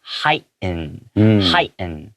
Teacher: as a native English speaker I tend to swallow that T sound and make it silent